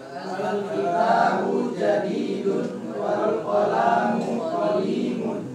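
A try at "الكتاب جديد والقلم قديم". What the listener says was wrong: Pendek aja ya. Lamnya jangan kepanjangan wal qalamu, jangan gitu. Wal qalamu qadimun. Nah, panjang pendek dalam bahasa Arab merubah arti ya. Itu cara bacanya ya, pendek.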